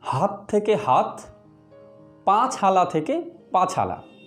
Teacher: অর্থাৎ দুটি ক্ষেত্রেই অল্প প্রাণ বর্ণ মহাপ্রাণ বর্ণরূপে উচ্চারিত হয়েছে। ধ্বনি পরিবর্তনের এই রীতিকেই বলে মহাপ্রাণী ভবন বা পিনায়ন।